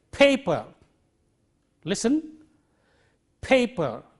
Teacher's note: the first one is unaspirated the second one is aspirated because of the positioning of the stresses